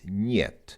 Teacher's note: It's almost like there's an invisible Y before the E.